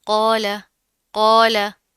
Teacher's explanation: कौफ के साथ अलिफ आ रहा है तो दोनों को मोटा पढ़ेंगे।